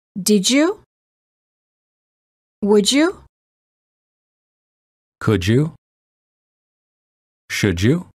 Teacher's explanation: D plus Y is usually pronounced as J as in joke